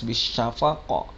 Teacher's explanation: qaf yang kedua ini baru qalqalah kubro, jadi pantulannya harus jelas, bisyafaq. Nah, syafaq seperti itu.